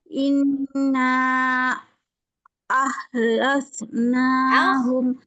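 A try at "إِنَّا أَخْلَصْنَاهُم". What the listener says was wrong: Bukan ho. Inna coba.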